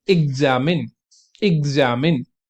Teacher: When x comes before a stressed syllable, ठीक है, जब आपका एक्स जो है वो स्ट्रेस्ड सिलेबल से पहले आता है, इट कैन मेक अ ग और ज की साउंड।